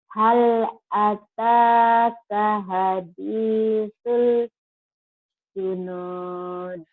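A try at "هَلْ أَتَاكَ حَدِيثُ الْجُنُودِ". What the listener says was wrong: Benar tapi jangan ada jeda lama-lama ya.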